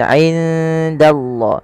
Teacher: Nun mati bertemu dengan dal, samarkan nunnya kepada huruf dal. Karena ia ada bacaan ikhfa yang dimana suara nunnya samarkan kepada huruf dal.